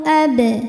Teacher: Sebab huruf ba sukunnya sukun asli dan ada di tengah bacaan. Maka dibaca dipantulkan dengan pantulan yang kecil. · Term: qalqalah sugro